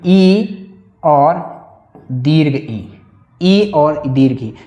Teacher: चाहे छोटी इ हो या बड़ी ई हो। इसका उच्चारण स्थान तालु है।